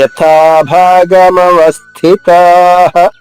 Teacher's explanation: తా దీర్ఘంగా, విసర్గ ఉచ్చారణ హాల హ చెప్పాలి.